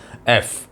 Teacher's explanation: जब आपके ऊपर के दांत नीचे के होंठों पे आके टिकते हैं तो फिर साउंड निकलती है एफ, एयर बाहर निकालने से